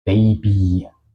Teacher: suena un poco más como una I larga